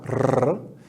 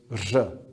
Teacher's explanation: It's basically a trilled R, R, with the sound of J